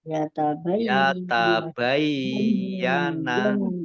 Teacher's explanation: Ya-nya ada tasdidnya, ya-nya dibaca double.